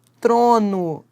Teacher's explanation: eu tenho t seguido do R, encontro consonantal. As duas consoantes são pronunciadas.